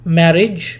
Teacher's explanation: marriage there are two syllables but the stress you know stress is given on the first syllable